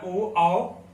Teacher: जैसे एक आप यहाँ पे देख रहे हैं होष्ठ प्लस कंठ, जो हमारा ओ आओ होता है इसको ओंठ और कंठ दोनों की सहायता से बोला जाता है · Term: संयुक्त स्वर